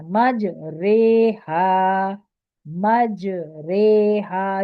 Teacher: جیم پہ قلقلہ ہے اور ری کی جگہ رے پڑھیں گے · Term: امالہ